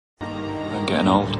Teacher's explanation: a lot of other accents especially many British accents just don't say the T sound at all